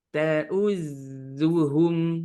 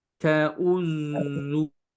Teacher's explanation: zai tipis, dan hu juga tipis